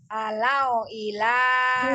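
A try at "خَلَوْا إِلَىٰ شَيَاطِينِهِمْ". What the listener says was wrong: Wow, sukunnya yuk disempurnakan dulu. Khalau ila syayatinihim. T-nya juga mad, ada ya sukun sebelumnya kasrah. Khalau ila syayatinihim. Khalau, masih khalau. Khalau.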